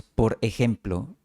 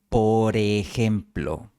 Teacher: moviendo la R a la siguiente palabra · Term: habla conectada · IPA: [po.ɾe'xem.plo]